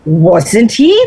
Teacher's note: the rise should begin on wasn't